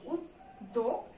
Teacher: যেহেতু জফলা আছে তাই দয়ের ডাবল উচ্চারণ হবে